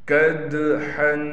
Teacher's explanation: قدحن، دال پر قلقلہ کریں گے، ہا کو بالکل صاف کر کے گلے سے نکالیں گے